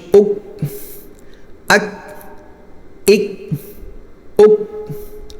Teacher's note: यह काफ जो है आगे वाले काफ बा मोटा होता है यह काफ बारीक होगा और इस पर आवाज बंद होगी कलकल नहीं होगा अगले वाले काफ पर कलकल भी होता है हमजा काफ जबर · یہ کاف باریک ہوگا اور اس پر آواز بند ہوگی، قلقلہ نہیں ہوگا، آگے والے کاف پر قلقلہ بھی ہوتا ہے۔